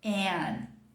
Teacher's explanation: Esse símbolo aqui é aquela mistura de A com E, né? É o som de cat, é um A mais aberto, um E misturado com um A.